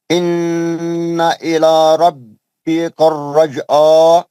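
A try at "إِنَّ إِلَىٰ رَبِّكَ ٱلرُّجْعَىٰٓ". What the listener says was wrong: رجا نہیں ہے, رجا پیش ہے.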